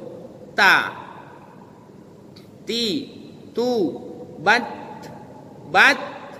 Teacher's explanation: Ujung lidah bertemu langsung dengan tempat tumbuh gigi seri atas. · Ujung ta yang sukun itu ada, tetapi nafasnya mengalir. Bukan menambah huruf menjadi ada huruf sin. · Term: huruf ta